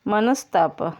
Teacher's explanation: देखिए विसर्ग लुप्त होकर यहाँ विसर्ग के बदले दंत्य स हो गया · विसर्ग के बाद त या थ आए तो विसर्ग लोप पाकर त या थ के विसर्ग के बदले दंत्य स हो जाता है। देखिए मनः धन ताप, मनस्ताप।